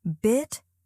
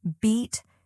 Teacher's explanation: The first sound in each pair is shorter, the second is longer.